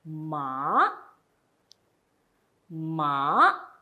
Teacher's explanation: second tone going up the tone is a rising tone